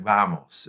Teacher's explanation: it's softer than our B, but still putting the lips together.